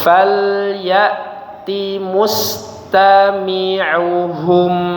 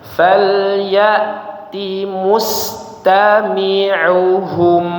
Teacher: Perhatikan di sini ya di huruf hamzahnya. Ingat falya jangan berubah jadi ain